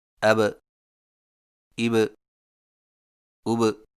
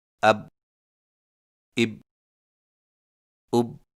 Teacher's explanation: حرف با پر جزم آئے تو دونوں ہونٹ آپس میں مل کر الگ ہو جاتے ہیں اور قلقلہ ہوتا ہے